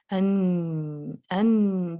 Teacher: जुबान जो है वो सामने से तो ब्लॉक कर रही है लेकिन आवाज नाक से भी जारी होगी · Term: गुन्ना क्वालिटी